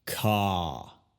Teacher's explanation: La primera parte de su apellido, si la escuchas, es la sílaba enfatizada. Y por eso tiene la vocal el sonido más como diptongo, larga y fuerte